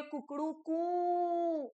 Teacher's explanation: यही तो प्लुत स्वर है जिसके उच्चारण में 3 गुना ज्यादा समय लग जाता है, वो प्लुत स्वर कहलाते हैं।